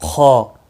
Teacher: خ ابتدائے حلق سے اس میں خرخر کی آواز ہوتی ہے